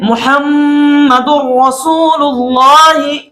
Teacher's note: दाल को हम डायरेक्ट रा के साथ मिलाएंगे और इस पर जबान को नहीं रोकेंगे और ना ही गुन्ना करेंगे।